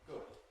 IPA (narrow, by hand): g̊ʊd̥